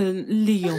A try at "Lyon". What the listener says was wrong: Reine-mère, on dit Lyon. Tu n'as pas besoin de faire comme moi avec les lèvres. Juste prononce Lyon.